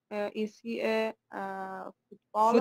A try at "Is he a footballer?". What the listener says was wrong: Footballer, yes.